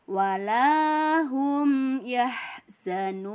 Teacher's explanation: dihentikan menjadi Mad Arid lissukun dibaca panjang 2-6 harokat